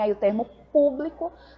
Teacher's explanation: a gente tem aí o termo público não é a sílaba po é a nossa sílaba tônica então é uma palavra proparoxítona